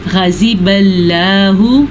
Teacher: पहली गलती गैन को बारीक पढ़ा, दूसरी गलती ज़वाद को बारीक पढ़ा